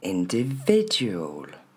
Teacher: Tous ces petits i, faudra pas les dire i, c'est bien le son e.